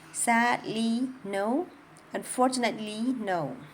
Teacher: So that amount of time between the for and the no is pretty much the same as the amount of time in the phrase sadly no. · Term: stress-timed language